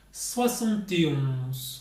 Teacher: Note that in that 11 part of that number, we don't pronounce the N, and it's a very nasal vowel